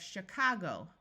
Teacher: the city of Chicago with a long O sound and the O taking the muffled schwa sound again